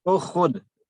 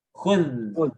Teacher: Tapi bagi orang Arab susah itu. Hamzah itu susah, apalagi disukunkan ya. Maka mereka memilih menghilangkan hamzah.